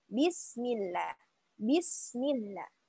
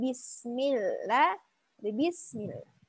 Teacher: sebagian orang ada yang membaca lam dengan keluar lidahnya pada harusnya di dalam